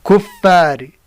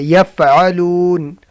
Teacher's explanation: دو سامنے والے اوپر دانتوں کی سر نیچے ہونٹ سے لگا کر ادا ہوتا ہے